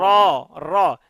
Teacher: জিহ্বার আগার উল্টো পিঠ তার বরাবর উপরের তালুর সঙ্গে লাগাইয়া উচ্চারিত হয়